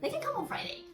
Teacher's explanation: they can come on Friday so come and Friday are the most important information